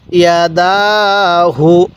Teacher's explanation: এই দালের মধ্যে খাড়া জবরের কারণে এক আলিফ টান দিছি